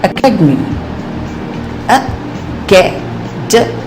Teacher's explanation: the second syllable is said with greater force